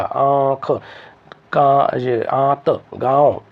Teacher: इन शब्दों को जब बोलेंगे तो आपका नाक और मुख दोनों काम करेंगे दोनों से धनि आएगी इसीलिए इनको अनुनासिक कहते हैं और प्रत्येक